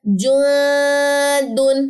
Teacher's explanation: اب اس کو جن نہیں پڑھنا، جیم نون پیش جن دن نہیں ہے، آپ نے ہوا میں اپنی وائس رکھنی ہے. دال کہاں پہ آ گیا ہمارے پاس؟ دال دانتوں کے پاس آ گیا.